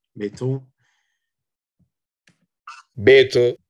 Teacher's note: it's a penult that clearly is stronger